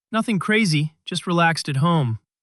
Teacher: Notice how your voice naturally drops at the end of the phrase. >> Yes, that falling intonation shows you are relaxed and confident in what you are saying